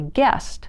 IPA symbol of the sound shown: t